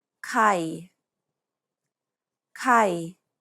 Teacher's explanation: The idea is to pronounce it low and keep it low throughout the entire syllable. Listen and repeat. · It's pronounced low and steady. Thai. Pronounce it lower than you would your regular pitch. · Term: low tone